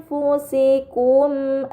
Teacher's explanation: Dan terakhir pada kata anfusikum terdapat nun sukun bertemu dengan huruf fa ini dinamakan ikhfa hakiki. Maka nun sukun dibaca secara samar dengan gunah yang dipanjangkan.